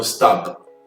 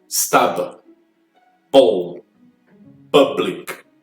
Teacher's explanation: Eu preciso de um pouquinho da corda vocal para poder fazer esse som, senão ela se transforma no som de P.